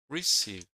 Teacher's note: The remaining word is receive which is stressed on the second syllable.